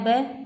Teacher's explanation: तब इसमें ट है वो मूर्धा है, भय है, पैप है ब, यानी कि होठ आपस में मिल रहे हैं तो ये ओष्ठ है